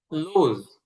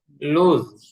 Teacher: লুজ এখানে যেই এসটা আসছে এটা আমাদের জয়ের মতন হবে, মানে বর্গীয় জ না, একটু অন্তুস্থ জ টাইপের হবে, লুজ হারা মানে হালকা জ, লুজ হারা।